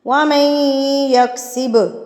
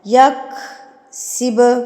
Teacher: با کے اوپر جب یہ جزم سکون کی علامت آتی ہے تو با پر آپ نے قلقلہ کرنا ہے، یعنی آپ نے اس کو ہلا کے پڑھنا ہے